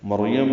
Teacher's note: مریم میں را ساکن سے پہلے زبر آنے کی وجہ سے را پر ہے. مریم یا اور میم جلدی ادا کرنے.